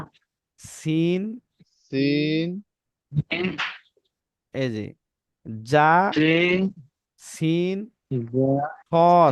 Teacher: জিহবার আগা সামনের নিচের দুই দাঁতের গোড়ার সঙ্গে লাগাইতে হবে